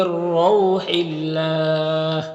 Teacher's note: اللہ کے لام سے پہلے ہا کے نیچے زیر ہے تو اللہ کے لام کو باریک پڑھیں گے، کھڑا زبر ہے۔